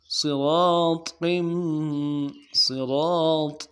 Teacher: صاد کو موٹا کرنا ہے، اور ایک الف دال میں، را کو ایک الف دال میں کھینچنا ہے